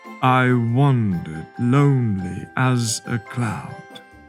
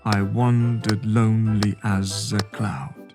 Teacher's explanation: Can you hear the stressed syllables? You will hear that the line goes da-da, da-da, da-da, da-da. It has 4 da-da patterns. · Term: iambic foot